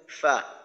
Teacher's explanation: দুইটা মাখরাজ হয় তো 14 নাম্বার মাখরাজটা হলো নিচের ঠোঁটের পেট নিচের ঠোঁটের পেট সামনের উপরের দুই দাঁতের আগার সঙ্গে লাগাইয়া উচ্চারিত হয় ফা নিচের ঠোঁটের পেট সামনের উপরের দুই দাঁতের আগার সঙ্গে লাগাইয়া